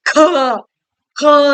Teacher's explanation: ಇದಕ್ಕೆ ನಮ್ಮ ಉಸಿರು ಜಾಸ್ತಿ ಕೊಡಬೇಕಾಗುತ್ತೆ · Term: ಮಹಾಪ್ರಾಣಾಕ್ಷರಗಳು